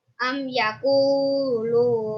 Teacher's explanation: Alasannya karena mim sukun bertemu dengan ya, cara bacanya jelas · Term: Idhar syafawi